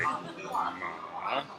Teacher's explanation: In the third tone, which is the bouncing tone, or a low tone